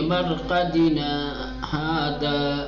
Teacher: آواز رک جانی چاہیے، سانس نہیں رکنی چاہیے، آواز رکنی چاہیے